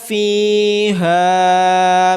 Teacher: فا کے بعد یا مدہ اور ہا کے بعد الف مدہ ہونے کی وجہ سے ان دونوں کو لمبا کیا جائے گا۔